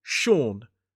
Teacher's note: One syllable. So it’s got that long /ɔː/ vowel sound, the same one we see in door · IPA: /ʃɔːn/